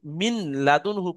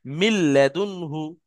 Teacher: এই নুনটা সম্পূর্ণ লামের মধ্যে ঢুকে যাচ্ছে, গিয়ে নুনটার উচ্চারণ হচ্ছে না, ডাইরেক্ট লাম উচ্চারণ হচ্ছে। তাহলে এখানে কেউ যদি মিন লাদুনহু পড়ে, মিন পড়ে, আর লামটা না পড়ে তাহলে কিন্তু ভুল হবে।